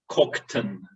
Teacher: So the schwa drops out in the second syllable